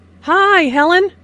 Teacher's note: notice that the i sound in high is extended to show that is very pleased to see helen